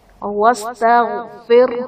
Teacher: واستغفر، غین حرف مستعلیہ پر پڑھا جائے گا. را ساکن سے پہلے زیر ہے تو را کو یہاں پر واستغفر میں باریک پڑھیں گے